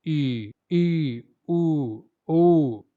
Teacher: संवृत की अगर बात की जाए तो उच्चारण में मुख लगभग बंद रहता है। बगैर मुंह खोले भी आप इनका उच्चारण कर पाते हैं।